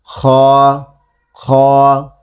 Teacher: খ, জিহ্বা উঁচু করে বলতে হবে, ঠিক আছে। খ, খ উপরের তালুর সঙ্গে লাগবে এবং মোটা আওয়াজ হবে।